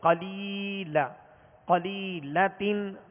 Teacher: لام یا زیر لی, یہاں یا مدہ ہے, یا ساکن سے پہلے زیر ہے لہذا یا مدہ ہوگی. ایک الف کی مقدار کھینچ کر معروف طریقے سے پڑھیں گے